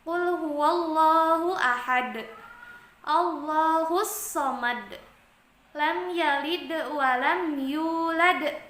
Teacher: Iya dah colui yazaalu ya betul yang selanjutnya yaitu qolqolah kubro qolqolah kubro yaitu pantulan suara huruf Qalqalah agak lebih besar Karena huruf Qalqalah nya itu sebenarnya hidup tapi dimatikan ketika wakaf